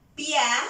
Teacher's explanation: Dos vocales contiguas en una misma sílaba. Primero una vocal débil, luego una vocal abierta. Cerrada, abierta. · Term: dictongo creciente